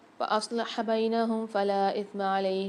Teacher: صاد کو موٹا کر کے پڑھیں گے۔ فلا میں لام کے ساتھ الف اور مد ہے، 3 سے 4 الف کی مقدار کھینچ کے پڑھیں گے۔